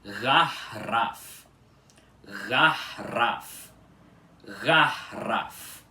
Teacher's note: Porque, como vocês podem perceber, aqui a primeira sílaba dessa palavra, que é gar, tem esse A aspirado logo depois do RR e não antes dele